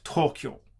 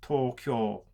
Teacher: so when you speak Japanese, you try to put equal stress on every single syllable